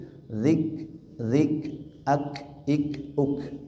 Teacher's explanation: huruf kaf nafasnya mengalir sedikit